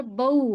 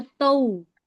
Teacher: जी बा वाव जबर बऊ, होंठ गोल होना चाहिए, बऊ वाव की आवाज आना चाहिए। ता वाव जबर तऊ, सा वाव जबर तऊ, है ना। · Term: वाव लीन